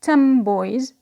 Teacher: So here the n becomes m before b, or because of b. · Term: regressive assimilation